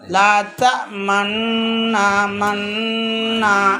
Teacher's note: بھائی پورا گول جو ہے واو کو ہوتا ہے، واو کا مخرج ہے وہ. ہاں پیش کو تھوڑے ہی گول ہوتے ہیں، ہونٹ پورا گول تو نہیں ہوتے نا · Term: اشارہ